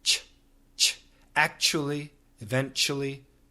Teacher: virtually no vibration in the CH